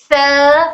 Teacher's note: सा में हमको हल्की सी टंग हमारी ऊपर के दांतों के किनारे को टच करते हुए बाहर निकालना है, तब हर सा नरमी के साथ अदा होता है।